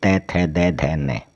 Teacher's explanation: त थ द ध न। तो अपनी जीभ जो है वह दांतों को टच करेगी। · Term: दंत वर्ण